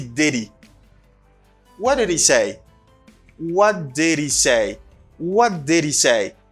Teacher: Il pas prononcer H là. Et puis il fait une sorte de liaison.